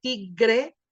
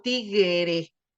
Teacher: siendo una palabra que es de dos sílabas generalmente se convierte en palabras de tres sílabas y terminan diciendo en lugar de tigre terminan diciendo tiguere no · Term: vocalización